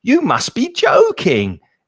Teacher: with you must be joking, the intonation is often very stressed because of the surprise